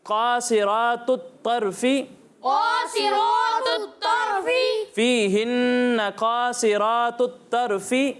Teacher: قاف، صاد اور را تینوں کو موٹا پڑھنا ہے